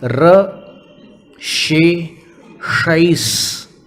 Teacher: तीनों तालव्य श, मूर्धन्य श और दंत स, तीनों का उच्चारण कर रहे हैं एक साथ।